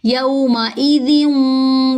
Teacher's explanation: ذال کے نیچے جو دو زیر ہیں تنوین والی، اس کو واو سے ملاتے وقت یہاں پہ ہم ادغام مع الغنہ کریں گے